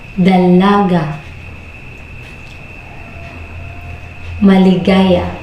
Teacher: Una ay ang tugmang patinig na walang impit na nagtatapos sa patinig na walang glottal na pasara o pagbigkas